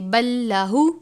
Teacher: ولدن سبحانہ، وقف کریں گے تو ہا کو ساکن کر دیں گے، اگر وقف نہیں کریں گے تو سبحانہ پڑھیں گے. بلہ، لام ساکن ہے، اس کے بعد لام مشدد ہے، تو ہم ان دونوں کو ملا کر پڑھیں گے